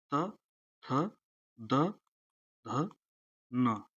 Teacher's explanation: त वर्ग दंत होता है। त वर्ग मतलब त, थ, द, ध, न।